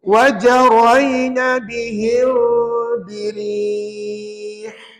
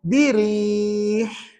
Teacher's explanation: Lepaskan angin itu, ya, supaya ada bunyi ha yang betul di situ. Dan ha ini namanya ha pedas sebab bunyinya di tengah kerongkong